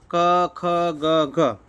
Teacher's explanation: કંઠ તમારા ગળામાંથી આ બધા શબ્દો નીકળશે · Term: કંઠ્ય